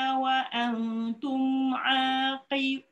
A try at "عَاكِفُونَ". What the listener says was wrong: Ah, jangan tekan qi.